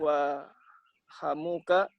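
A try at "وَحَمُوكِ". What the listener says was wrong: Hamuki harus pakai ki, bukan harus. Lebih sahih kita pakai ki, bukan hamuka.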